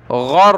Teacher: غین کو را کے ساتھ ملایا، اس کو تشدید ہے تو سختی کے ساتھ پڑھیں گے را کو